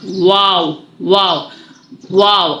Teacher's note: वाव होठों की गोलाई से ज्यादा होगा